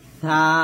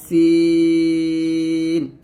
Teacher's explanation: তারপর হচ্ছে সা এবং সিন, দেখুন সা এবং সিন উচ্চারণ করার সময় সবচেয়ে বেশি গুরুত্বপূর্ণ হচ্ছে সাটা জিহ্বাটা উপরে দাঁতে আগে লাগবে, আর সিনটা জিহ্বাটা নিচে দাঁতে মাঝে লাগবে। এখানে দাঁত পার্থক্য, জিহ্বার আগাটা উপরে দাঁতে লাগবে সা এরকম, আর সিন জিহ্বাটা নিচে দাঁতের সাথে লাগিয়ে পাতলা উচ্চারণ করতে হবে সিন এরকম ভাবে।